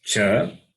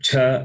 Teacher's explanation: Cha, this is Alpa Prana, non-aspirate. And Cha is Mahaprana, aspirate.